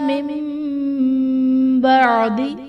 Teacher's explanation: اوتوا الکتاب الا من بعد، من بعد میں نون ساکن کے بعد حرف با ہے تو یہاں ہم نون ساکن کو میم سے بدل کر اخفا کریں گے، یعنی غنہ کر کے پڑھیں گے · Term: اقلاب